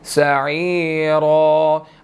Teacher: आइन के बाद या मद्दा है, इसको 1 सेकंड लंबा करना है और रा को हमने मोटा अदा करना है, ठीक है। रा पढ़ेंगे, बस इसको 1 सेकंड लंबा करेंगे क्योंकि आगे अलिफ मद्दा भी है, ठीक है।